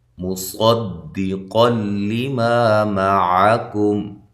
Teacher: صاد کو موٹا کرنا ہے، دال کو باریک، قاف کو موٹا